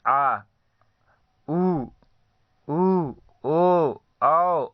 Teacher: जिन स्वरों के उच्चारण में जीभ का पश्च भाग काम करता है उन्हें पश्च स्वर कहते हैं।